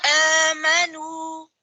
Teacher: نون غنہ کی آواز نہیں آئے گی